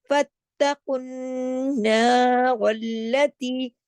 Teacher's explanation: double غنہ ہے، اکمل غنہ ہے، پورا حق ادا کرنا ہے، را پہ زبر ہے جس کی وجہ سے را موٹا پڑھا جائے گا ، پھر رلا، پھر اگلی لام کے اوپر تشدید ہے، رل · پھر نون پہ تشدید ہے، ڈبل غنہ ہے، اکمل غنہ ہے، پورا حق ادا کرنا ہے